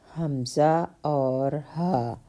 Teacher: یہ حمزہ اور ہا حلق کے نیچے والے حصے سے ادا ہوتے ہیں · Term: حروف حلقیہ